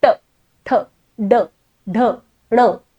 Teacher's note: नंतर त्याच पद्धतीने आहे ट, ठ, ड, ढ, ण. जीभ तुम्ही पूर्ण टाळूच्या मागे नेता, टच करता आणि पुढे आणता. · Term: मूर्धन्य वर्ण